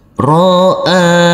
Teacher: huruf alif harus kita baca panjang dengan panjang dua harakat